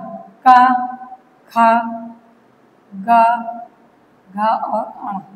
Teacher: क वर्ग की सभी ध्वनियों का उच्चारण कहां से होता है? कंठ से होता है।